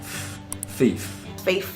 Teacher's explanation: Now, if you're a speaker of an accent that fronts TH sounds, meaning instead of using your tongue tip and the teeth, you use something more to the front of the vocal tract, like your lip going to your teeth like this. So a word like thief, you'd be inclined to use thief.